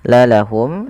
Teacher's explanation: menjelaskan suara mimnya tanpa ada penahanan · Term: izhar syafawi